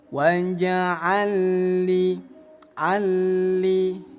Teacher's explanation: Cara baca idgham mutamatsilain lebur teman-teman. Lam yang pertama kita buang aja, kita abaikan, langsung baca lam yang bertasydid. Waja'alli, alli, jangan ditahan, nggak boleh didengungkan. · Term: idgham mutamilain